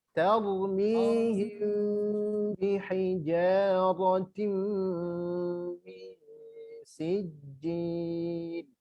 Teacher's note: Ikhfa syafawi, satu pendapat mengatakan dia ada furjah. Furjah itu kalau kertas dimasukkan ke mulut kita ada sedikit lubang sedikit, itu furjah.